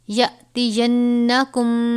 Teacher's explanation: نون مشدد ہے، اس پہ بھی غنہ کریں گے